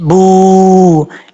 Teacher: वाओ साकिन हुआ। वाओ साकिन से पहले पेश हो तो वाओ मद्दा होगा, और एक अलिफ की मकदार उसको लंबा करके पढ़ेंगे।